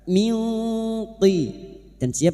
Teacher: Kita samarkan bunyi nun sukun dan mendengung selama tiga harakat. Min thp membunyikan huruf depannya yaitu huruf th. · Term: ikfa hakiki, ikhfa hakiki